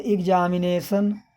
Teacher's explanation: क्योंकि हिंदी में हम सीधा एग्जामिनेशन, न कोई ऊंचा न कोई नीचा